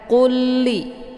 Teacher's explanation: lam yang pertama yaitu yang sukun dimasukkan ataupun dileburkan ke dalam lam yang kedua yaitu lam yang bertasydid. Cara dimasukkannya dengan cara ditekan, qulli, ya. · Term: idgham mislain